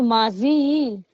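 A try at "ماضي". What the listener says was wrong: माजी नहीं, मादी। मादी।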